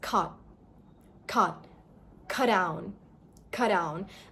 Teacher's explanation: when the letter T is at the end of a word, your tongue will not come down. So, it's cut.